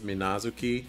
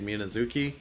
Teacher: the way that a Japanese name would be pronounced you give each syllable equal emphasis